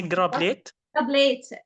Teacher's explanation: some accents we can say change T to soft R